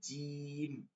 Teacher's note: মধ্যখান থেকে আগা পর্যন্ত জিহ্বাটা লাইগা গেছে একদম লাইগা গেছে কোন ফাঁকা নাই এজন্য এটা হার্ড হবে